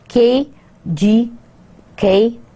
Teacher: the constriction occurs by raising the back part of the tongue to the soft palate or the vellum. Vellum ko ya soft palate jo aapka hai, usko agar aap apna tongue raise karenge, to it will create these sounds of K, G, and K. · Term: velar